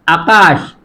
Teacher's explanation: আকাশ আ মুক্তাক্ষর অর্থাৎ দীর্ঘ করে উচ্চারণ করা যাচ্ছে।